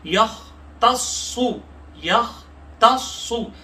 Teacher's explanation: خا کو موٹا پڑھیں گے، صاد کو موٹا پڑھیں گے، تھوڑا سا رک کر سختی لائیں گے تشدید کی وجہ سے